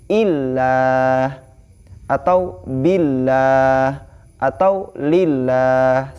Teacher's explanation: lafzul jalalah ketika sebelumnya ada huruf yang berharokat kasroh, maka dihukumi dibaca tarkik atau tipis